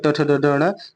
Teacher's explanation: कंठ, तालु, मूर्धा, दंत और ओष्ठ स्थानों के स्पर्श से बोले जाते हैं, इसलिए इन्हें स्पर्शी व्यंजन भी कहते हैं। मूर्धा के अंतर्गत ट ठ ड ढ ण